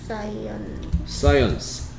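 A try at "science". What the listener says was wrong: 자, 끝이 늘 대충이야. 사이언. 아니, 딱 단어를 끝을 내줘야 될 거 아니야. 끝을 대충 한다는 얘기는 끝부분은 제대로 공부 안 했다는 얘기하고 똑같거든요. 사이언스.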